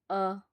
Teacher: मध्य भाग है अ जो उदासीन स्वर होता है